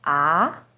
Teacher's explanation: starts with a little lower pitch and goes up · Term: second tone